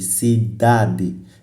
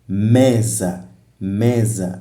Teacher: A sílaba tônica está na penúltima sílaba da palavra. Então, quer dizer, a palavra que tem maior intensidade sonora, aliás, a sílaba que tem maior intensidade sonora é a penúltima na palavra. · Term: palavras graves